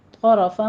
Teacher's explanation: طرفا میں طا بھی پر ہے، را بھی پر ہے